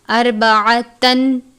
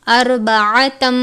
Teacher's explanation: تنوین کے بعد میم مشدد ہے، تنوین کو میم مشدد سے ملا کر غنہ کر کے پڑھیں گے